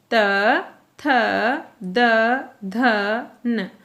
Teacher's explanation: क्यों ऐसा? क्योंकि उच्चारण करते समय हमारी जीभ दांतों को स्पर्श करती है, इसलिए इनको कहा जाता है दंते व्यंजन।